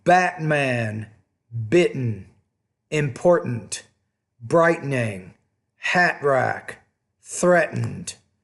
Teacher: the glottal stop that T in the middle of the word